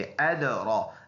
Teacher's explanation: दाल में कलकला, रा के ऊपर खड़ी ज़बर है, ये रा पुर है और इस खड़ी ज़बर की वजह से इसको थोड़ा सा लंबा करेंगे एक अलिफ के अंदाज़ा।